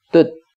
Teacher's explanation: saat dhomahnya diketuk terbentuk suku kata tertutup berakhiran t